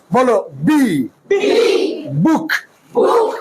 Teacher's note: শোনো, বি উচ্চারণ হলো দুটি ঠোঁট শক্ত করে চেপে ধরে, দুটি ঠোঁট শক্ত করে চেপে ধরে বলবা, মুখ থেকে যেন বাতাস বের না হয়।